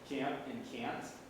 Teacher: Even though I'm not putting the M or the N in there, you still hear the implied nasal.